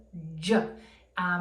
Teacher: same as ch, but voiced